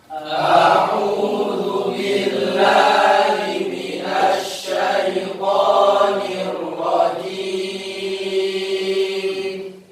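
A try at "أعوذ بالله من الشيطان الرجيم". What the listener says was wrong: A'u perpindahan dari hamzah ke ain itu refleks, harus berbeda betul. Jangan ainnya berubah menjadi hamzah. A'u kan enggak pas.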